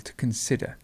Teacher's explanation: we've got the stress in the middle